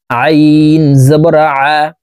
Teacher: আইন হরফ হলকের মধ্যখান থেকে চাপ দিয়ে পড়তে হবে, কারণ আইনের মখরাজ হলকের মধ্যখান থেকে হবে।